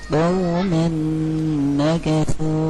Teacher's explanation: Tanwin bertemu dengan huruf nun punya idgham bi gunnah, maka ditasydidkan huruf nunnya.